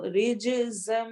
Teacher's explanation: رج جیم پر کلکلا ہوگا